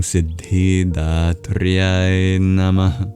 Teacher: That's the visarga, an expulsion of breath. It's kind of like an exhale.